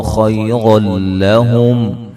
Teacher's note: کو موٹا ادا کریں گے، را کے اوپر زبر ہیں، اور یہاں نون تنوین کا ادغام ہوگا لیکن بلا غنہ ہوگا، غنہ نہیں کریں گے